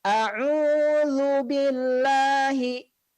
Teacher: pengucapannya adalah ujung lidah menempel dengan ujung gigi seri atas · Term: huruf dzal